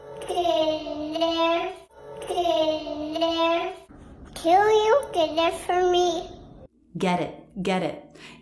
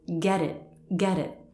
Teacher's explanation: It sounds like a D between vowels in American English, doesn't it? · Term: flap T